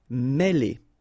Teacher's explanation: Mêler, okay, remember, accent circonflexe here on the top of E, and it will give you the sound E, really open